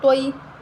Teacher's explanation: اب طوا کے آگے یا لین ہے تو ہم اس کو بغیر جھٹکا دیے بغیر لمبا کیے نرمی کے ساتھ ادا کریں گے